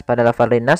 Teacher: alif lam yang ditulis tapi tidak dibaca, langsung ke huruf nun yang bertasydid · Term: alif lam syamsiyah